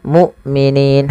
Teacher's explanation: hamzahnya harus dibaca dengan syiddah dan jahar, tidak ada nafas dan tidak ada maksudnya tidak mengadirnya nafas, yaitu dan tidak dialirkan suaranya tapi tertahan.